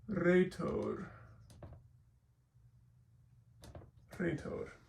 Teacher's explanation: It makes the R sound, but in Greek it's almost always going to be trilled, like the Spanish or French, or well, not French.